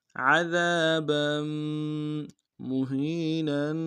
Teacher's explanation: با کے تنوین کو آگے میم کے سامنے آنا ہے، میم کے اوپر تشدید زور دیں گے